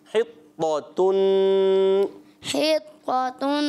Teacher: حا طا زیر حط طا زبر طا حط طا نون دو پیش تن حطتن. طا کو موٹا تا کو باریک